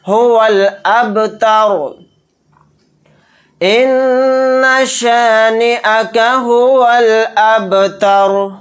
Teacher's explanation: با کے اوپر جزم ہے, با ساکن ہے تو یہاں پر قلقلہ ہوگا.